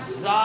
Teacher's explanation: جیسے آپ زا ادا کرتے ہیں، زا ادا کرتے ہیں، اس میں ایک صفت وہ سیٹی کی طرح آواز آتی ہے، سفیریہ جسے بولتے ہیں